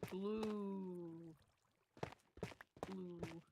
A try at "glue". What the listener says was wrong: I don't know how, but the way you're pronouncing it sounds like you're pronouncing blue with a double O. And I don't know how that works. Just the way you're saying glue, all my brain, like, translates it into text. It's putting it, like, Gloo.